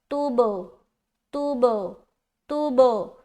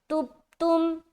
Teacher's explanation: कि उसने कलकला नहीं किया, और कलकला कहते हैं मिलाकर जुदा करने को। ता को जब हम बा से मिलाएंगे, मिलाने के बाद जुदा करेंगे, तब होगा कलकला सही तरीके से अदा।